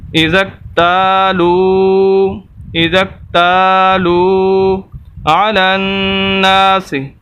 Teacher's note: واو مدہ، اس وجہ سے تا کو لمبا کر رہے ہیں اور لام کو · لام کو ہم ڈائریکٹ ملائیں گے نون کے ساتھ، یا خالی الف خالی لام خالی نہیں پڑھیں گے، نون مشدد ہے۔